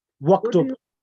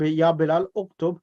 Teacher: If it is preceded by a word, the hamza is omitted in pronunciation, though it remains in writing. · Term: hamzatul wasl